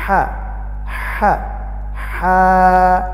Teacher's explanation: লি হা হা খাড়া জবর আছে, এক আলিফ টানতে হবে। আর হায়ের মাখরাজ হলো হলকের মধ্যখান